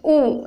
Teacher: ऊ इस तरह से जब निकलता है, लिप से निकल रहा, ओष्ठ से